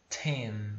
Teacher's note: Esse T em inglês, ele é pronunciado soprando, é como se você estivesse botando um arzinho para fora da sua boca, né? Então, de novo, imagina que tem uma folha na sua frente e você quer soprar ela, né?